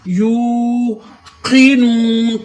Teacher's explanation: اس ہا کی آواز سینے کے جوڑ سے نکالے، ہم یوقنون، یو پہ واو مدہ ہو رہا ہے، واو ساکن اس سے پہلے پیش، تھوڑی دیر ٹھہریں گے۔ یوقنون کاف کو موٹا کریں گے، نون پر پھر واو مدہ ہو رہا ہے، واو ساکن اس سے پہلے پیش، یوقنون۔